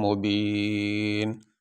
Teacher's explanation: یہاں پہ آخری رفع نون ہے، اس کے اوپر دو پیش، وقف کرتے ہوئے اس کے اوپر جو دو پیش ہے وہ نہیں پڑھیں گے، نون کو ساکن پڑھیں گے۔